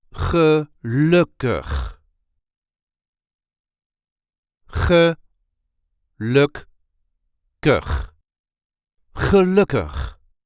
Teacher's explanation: There is a light emphasis on the second syllable.